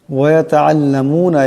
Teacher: আইন আছে, আওয়াজটা গলা থেকে চাপ দিয়ে আনতে হবে।